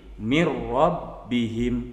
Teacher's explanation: Begitupun ketika menghadapi huruf ro, min rabbihim berubah menjadi mir rabbihim. Nah, jadi catatannya harus tetap ditekan. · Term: idgham bila gunnah